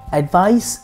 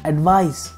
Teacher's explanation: Advice has an S sound at the end, and advise has a Z sound at the end.